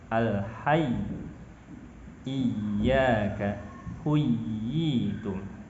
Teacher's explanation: Ya ketika bertasdid, baik ketika di tengah ataupun di akhir, ketika washoh ataupun waqaf, diharuskan untuk membacanya nabroh atau meninggikan suara dibanding huruf yang lainnya.